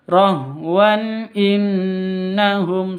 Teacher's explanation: Tanwin bertemu dengan hamzah. Cara bacanya jelas, terang, tidak boleh dengung.